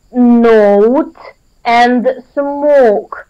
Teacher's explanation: we want to discuss the diphthong O. It stands for two sounds, O and U.